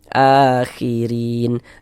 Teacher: Baris satu di bawah huruf harakat kasrah. Maka huruf ro dibaca tipis, dibaca tarkik. Akhirin rin dibaca panjang.